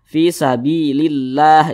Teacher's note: kalau ada lafaz Allah sebelumnya ada huruf yang memiliki tanda baca kasrah maka lafaz Allahnya ini dibaca tarqik Dibaca tipis